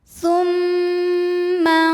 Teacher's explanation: ikhfa ausat sebab ada nun sukun menghadapi huruf d cara bacanya Nun dibunyikan samar-samar siap-siap menuju makhraj huruf d disertai bunyi dengungan · tidak jauh dari Nun jadi tengah-tengah jadi cara membunyikan nya adalah ujung lidah kita sudah disentuhin ke ujung gigi seri bagian atas jadi Sudah menyentuh makhraj dari huruf d tapi tidak menekan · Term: ikhfa Hakiki